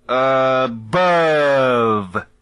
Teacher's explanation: в слове «above» есть сразу два «шва». Безударный первый и ударный второй. «Above». Если быть совсем педантичным, то два этих звука фонетически немного различны.